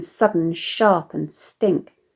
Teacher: Stressed syllables predominate and enhance the hissing sibilance